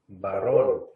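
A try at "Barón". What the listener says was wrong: Baron. Baron. Con acento en la O.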